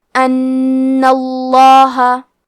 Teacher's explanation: جیسا کہ یہاں حرف نون ہے تو یہ 2 نون ہے، نون ساکن اور نون متحرک، اور کیونکہ تشدید زبر کا ہے تو لفظ الجلالہ کلام کا حکم ہے تفخیم، تو ہم حرف اللام کو موٹی آواز میں پڑھیں گے